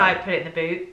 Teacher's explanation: I don't feel like many people pronounce the T on boot